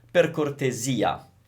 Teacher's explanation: we're stressing the E, which is kind of unusual